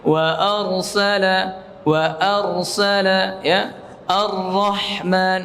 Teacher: Ya, karena kata Imam Ibnu Jazari makhraj dari huruf ra war-ra yudanihi li dhahrin adkhalu, yaitu huruf ra makhrajnya mendekati makhrajnya nun, ya, yaitu ujung lidah dengan langit-langit atas yang agak depan. Ya, akan tetapi huruf ra bedanya ia pada punggung, ya, pada punggung lidahnya di sini, di punggung lidah, bukan pada ujung sini, ya.